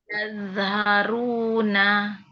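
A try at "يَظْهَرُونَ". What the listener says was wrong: Jangan mantul, Bun. Jangan yaza. Jangan yaza. Yalharu ditahan.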